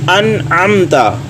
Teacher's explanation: یہاں پہ نون ساکن ہے، ان، اور آگے عین کی آواز نکالنی ہے گلے کے درمیانی حصے سے